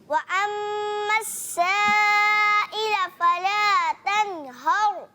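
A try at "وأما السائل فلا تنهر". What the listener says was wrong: اور مد کو تھوڑا سا لمبا کریں، غننے کو بھی.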